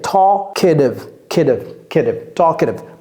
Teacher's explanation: Ne prononcez pas le L.